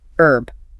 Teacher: American English usually drops the H.